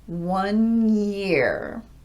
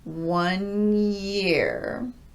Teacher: I'm just rolling my tongue from an N to a Y shape without breaking my voicing.